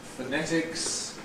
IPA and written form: fəˈnetɪks (phonetics)